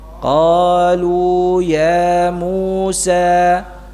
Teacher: ya kita baca hurufnya panjang-panjang ini ya seukuran dua harakat karena memang mad thii dipanjangkan uran dua harakat saja tidak lebih · Karena memang mad tabi'i dipanjangkan ukuran 2 harakat saja, tidak lebih maupun tidak kurang ya, jangan dikurangi.